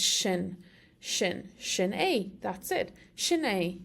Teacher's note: in Irish that first S gets an SH sound often, so it's shin.